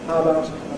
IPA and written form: ˈhaəbaʊt (How about)